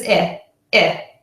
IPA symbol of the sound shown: ɪ